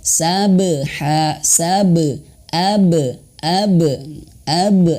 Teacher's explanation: sabeha Sabe Abe Abe langsung mantul gitu jangan ditahan dulu kemudian pantulannya itu untuk huruf ba tidak Sabe Sabe atau Saba tapi mantulnya itu ke e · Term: Qalqalah